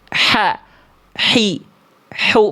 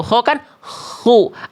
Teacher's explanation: H kecil itu karakter nafasnya lebih lembut lagi dibanding K. Dia lebih clean, lebih bersih, berbisik.